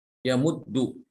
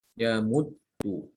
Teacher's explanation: Ini diidghamkan. Dal yang pertama itu diidghamkan ke dal yang kedua sehingga menjadi satu huruf, satu pengucapan. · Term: huruf yang bertasydid